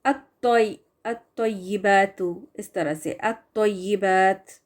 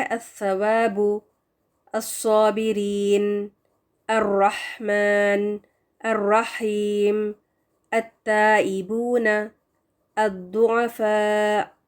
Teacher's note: اس لام کو ہم نہیں پڑھیں گے، اس کو ڈراپ کر کے آگے والے حرف کے ساتھ مرج کر دیں گے۔ اور آپ دیکھیں گے کہ شمسی حروف کو بھی آئیڈینٹیفائی کرنے کا ایک طریقہ یہ ہے کہ لام تعریف کے بعد جو بھی حرف ہوگا نا، اس کے اوپر تشدید بنی ہوگی، اس کے اوپر شدہ ہوگا۔